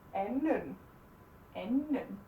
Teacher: The D is silent, no matter what.